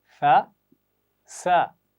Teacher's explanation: सा के लिए हम ज़ुबान की नोक ऊपर वाले दांतों के सिरे से लगाएंगे, सीन के लिए नीचे वाली दांत के साथ